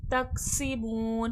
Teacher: सीन में सख्ती सीटी की आवाज़ आएगी, बू में वाव मद्दा है, खींच कर।